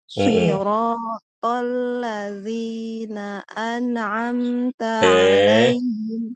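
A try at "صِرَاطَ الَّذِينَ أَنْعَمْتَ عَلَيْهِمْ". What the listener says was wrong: Enggak kol-kolah dong. An'amta tidak.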